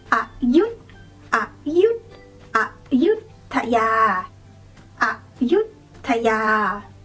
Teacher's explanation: start off with go low, and then when you say the second syllable, yut, go high.